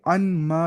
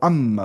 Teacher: جو نہیں ان اور ما، یہاں لکھا ہے اس نے کہ اصل میں ان ما تھا، ان ما، نون کو میم میں ادغام کر دیا گیا، نون کو میم میں ادغام کر دیا گیا، ملا دیا گیا، تو اما بنتا ہے، انما نہیں، اما ہے نا، وہ قاعدہ ہے اس کا، کیونکہ نون اور میم دونوں میں گنا، دونوں گنا میں شریک ہے، اور ما کا الف اس غرض سے حذف کیا گیا تاکہ ما استفہامیہ اور ما خبریہ میں تمییز باقی رہے۔